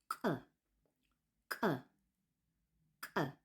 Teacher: To make this sound, instead of what we did for the t, where we engage the front of our mouth, we have to engage the back. So the back of your palate clicks with the back of your tongue. And try to make it click really hard.